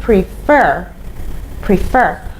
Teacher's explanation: the stress is on the second syllable so you say prefer prefer okay so you say prefer plus